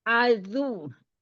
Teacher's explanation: Umi tidak adu, tapi azu. Ujung lidahnya keluar.